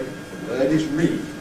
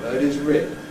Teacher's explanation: it is the case that the vowel in ‘reed’ lasts longer than the vowel in ‘rid’